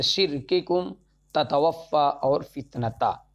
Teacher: اصل میں کاف اور تا شدیدہ ہونے کے ساتھ ساتھ محموسہ بھی ہیں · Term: صفت شدت